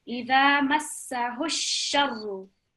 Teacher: So this alif here, again, this is blank. So we're joining the ha with dhamma directly with the sheen, with the fatha and the tashdid